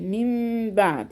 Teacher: وعندك النون وراها باء اتقلبت الى ميم، يبقى ننطق ميم من بعد، يبقى جبنا غنة ايه اقلاب.